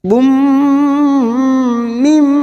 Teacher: tanwin bertemu mim namanya idgham bigunnah, masuk dan mendengung, masuk ke huruf mim dan ditahan selama 3 harokat. · Bum mim, masuk ke huruf mim berikutnya, mim yang bertasdid namanya gunnah musaddadah, kita dengungkan dan ditahan selama 3 harokat